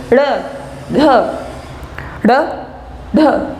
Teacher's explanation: जीवा पहले ऊपर जाती है और फिर झटके के साथ नीचे की तरफ आती है, इसलिए इनका जो नाम है उत्क्षिप्त व्यंजन है। · उत्क्षिप्त व्यंजन में झटके के साथ जो है वायु बाहर निकलती है, हमारी जीवा पहले स्पर्श करती है ऊपर की तरफ और उसके बाद वो झटके के साथ नीचे गिरती है